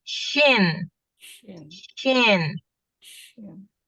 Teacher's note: Huruf shin itu terletak di tengah-tengah lidah juga. Cuman bedanya kita harus ada sifat tafashi. Tafashi itu Angin menyebar di mulut.